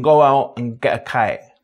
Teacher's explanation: The K and G consonants are pronounced quite far back in the mouth